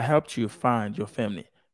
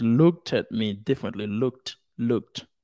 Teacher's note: if the verb ends in a voiceless sound like P and help okay and look then the Ed is pronounced like a t